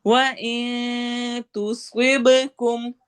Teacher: स्वाद को मोटा पढ़ना है, बा पे कलकला करना है